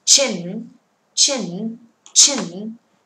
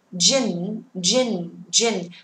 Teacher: Một âm ch không rung, it is unvoiced, and we have the word j, voiced. Được chưa? Một âm vô thanh, âm hữu thanh, vô thanh màu xanh, hữu thanh màu đỏ.